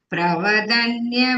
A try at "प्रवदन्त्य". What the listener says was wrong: Pravadanya is not there. Pravadantya, dantya.